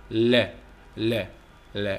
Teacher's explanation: lateral sounds هي الأصوات الجانبية، هي الأصوات التي يمر الهواء، هو صوت وحيد، هو الهواء يمر من خلال جوانب اللسان، هو نسميه lateral sound، أصوات جانبية.